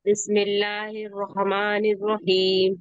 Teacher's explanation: देखिए रहमान और रहीम, थोड़ा सा रॉ को मोटा जी। करके पढ़िए, फिर से पढ़िए।